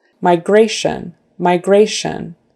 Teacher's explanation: It's the next to the last syllable, and the shun at the end is always kind of dropped. Your voice drops. It's not stressed.